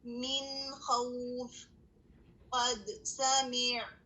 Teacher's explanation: قد دال پر سکون آ گیا تو اس کی جو جہر کی کوالٹی ہے اور جو اس کے اندر قلقلہ ہے وہ واضح ہو گیا